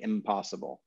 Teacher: impossible 10 times fast you end up saying impossible because the the n moves forward in the mouth to anticipate the coming sound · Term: assimilation